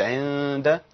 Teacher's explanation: عند المسجد، انا كده اخفيت النون وبان يعني جزء من الغنى بس. صوت الحرف اللي هو بعد النون بيظهر في الغنى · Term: الاخفاء